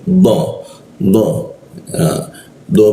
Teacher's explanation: Dana ada di ee lidahnya itu menempel dengan gigi dia